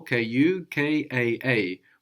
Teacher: And we have two A's on the end there, no? Kukaa, which in Swahili makes it like two syllables, which is why we have the accent on ka